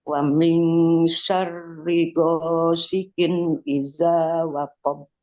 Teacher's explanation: Ri-nya jangan sampai panjang lagi.